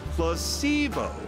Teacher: The stress is on the middle syllable.